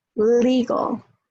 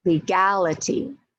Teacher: So legal, the A is weak, but in legality, it's strong.